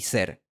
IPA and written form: seɾ (ser)